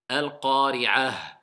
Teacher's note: Le ta marbuta, il devient ha quand on s'arrête.